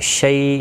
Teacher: شی یا لین ہے تو نرمی کے ساتھ کھینچ کر ادا کریں گے۔